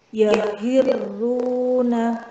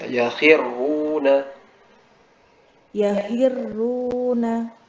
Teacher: Nah, apalagi dia bertemu dengan huruf ro dhammah ya, karena huruf ro dhammah itu baca tebal, jadi kho sama roknya tebal.